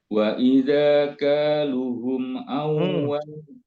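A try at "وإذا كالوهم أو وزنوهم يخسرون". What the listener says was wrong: Lu-nya ada wawunya di situ, ya. Jadi dibacanya 2 harokat.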